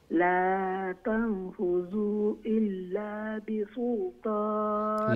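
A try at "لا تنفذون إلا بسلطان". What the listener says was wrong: لا تنفذون নুন আছে নুন মিসিং হয়ে গেছে জি তানফুজুনা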